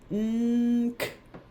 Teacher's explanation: My lips never shut. Nk. It's actually my tongue is moving.